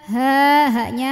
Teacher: ha gede lagi dari tenggorokan bawah